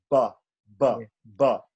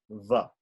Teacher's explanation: Bharat is ba, but Vada is va. So va, you have the top teeth touching the bottom lips. Va. Then the sibilants are also difficult for Bengali speakers, right?